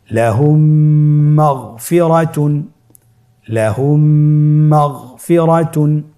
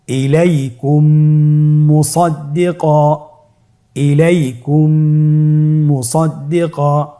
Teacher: মিম সাকিনকে পরবর্তী মিমের সাথে মিলিয়ে পড়তে হবে গুণনার সহিত।